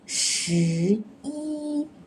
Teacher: Because it's a number and it's the end of the word. So we are using the original tone of E, which is the first tone. That's first rule, which is as number or sequence and read first tone.